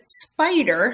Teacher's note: it's got the unvoiced consonant following the s, and when I co-articulate, it comes out voiced because it's preceding a vowel, and vowel is voiced.